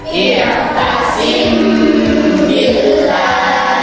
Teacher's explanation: Cara membacanya dengan merapatkan bibir atas dan bawah. dibaca sama dengan dengung panjangnya itu adalah satu alif atau dua harakat. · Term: ikhfa syafawi